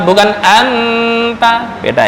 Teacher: Anta nun mati bertemu ta itu ikhfa ya. Ikhfa remang-remang bukan dibaca izhar.